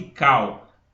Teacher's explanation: a é a minha vogal que é mais forte e o u que é mais fraco Cau u a gente quase não escuta é minha semivogal quando